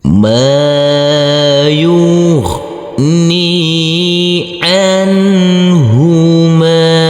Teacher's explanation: Huruf mim kita baca panjang dengan panjang 2 harokat karena huruf mim yang berfathah ini bertemu dengan huruf alif yang tidak berharokat. · Huruf nun di sini huruf nun yang bersukun kita baca terang atau jelas karena ini bertemu dengan huruf H. Jadi di sini huruf nun bertemu dengan huruf H harus kita baca terang atau jelas untuk huruf nunnya karena ini adalah bacaan idhar. · huruf nun yang bersukun kita baca terang atau jelas karena ini bertemu dengan huruf ha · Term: bacaan izhar